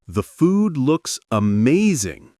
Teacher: Let your tone rise slightly on amazing, giving it energy and sincerity.